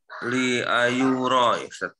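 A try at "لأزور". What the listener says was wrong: Li azura. Bukan ayu. Ada zai di situ.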